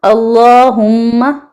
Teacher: اللہم میم پہ بھی تھوڑا اچھا رکنا ہے، اور اللہ کے لام کو موٹا کہنا ہے۔